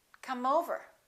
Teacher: the word come the E after the m is silent therefore the m is the last sound and it's a consonant and over is a vowel let's link that